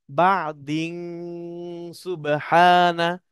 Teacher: সিন হলো ইকফার হরফ, ইকফার হরফের কাজ হলো নাকের বাসিতে নিয়ে গুন্না করে পড়া